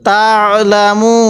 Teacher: হরফের পূর্বের হরফের মদের হরফ থেকে একটি হরফ আছে ওয়াও এজন্য এখানে ওয়াকফের সময় তিন আলিফ টান দিব